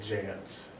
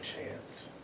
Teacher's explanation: a ch often will jump to a j sound, so jance instead of chance. So you get a bit more of a j at the beginning.